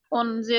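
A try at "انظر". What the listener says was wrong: अनज़िर। यहाँ पे नुक्ता है, please be attentive, be attentive, be attentive.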